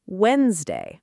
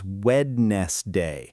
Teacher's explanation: It's spelled w e d n e s d a y, but native speakers say it as Wednesday. That middle d basically disappears.